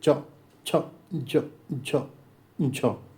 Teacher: जीभ जो है तालु को टच कर रही है। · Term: तालव्य